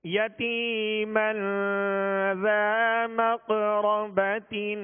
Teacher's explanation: یتیمن پہ غنہ کریں گے، ایک الف کی مقدار غنہ کریں گے، یہ اخفا کا قاعدہ ہے